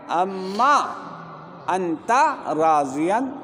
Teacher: نون کو میم کر دیا، میم کو میم میں ادغام کر دیا